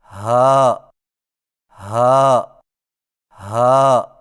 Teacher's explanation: ہا کی ادائیگی میں زبان کی جڑ کو حلق کی طرف دبائے بغیر باریک اور بغیر رگڑ کھاتی سانس میں پڑھیں